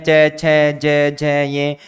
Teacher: इनका उच्चारण करने पर तालु वाले भाग में ही अधिक कंपन होता है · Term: तालव्य वर्ण